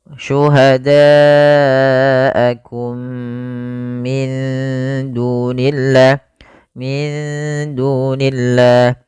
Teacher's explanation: demi mati bertemu dengan mim ini merupakan bacaan Idgham Mimi yaitu mimnya dimasukkan kepada mim yang kedua dan ditahan